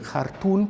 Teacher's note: como la consonante bilabial nasal sonora se encuentra en posición de neutralización, se pronuncia por supuesto como una N